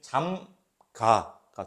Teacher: 잠그 플러스 아거든요. 그러면 잠가가 돼요. 의가 날라가서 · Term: 의 탈락